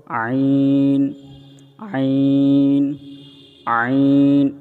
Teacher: আইন বলার সময় আমরা গলার মধ্যভাগ থেকে আমরা চাপ দিয়ে টানে নিয়ে আসবো আইন আইন আইন এবং আইন বলার সময় আমরা চার ইলিফ টানবো